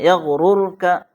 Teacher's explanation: رائے ساکنہ سے پہلے پیش آئے، اس لیے رائے ساکنہ کو پر پڑھا جائے، یغررک، منہ بھر کے پڑھنا ہے، یغررک۔